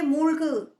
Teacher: உ சவுண்டு கொஞ்சம் குறைஞ்சிருக்கும்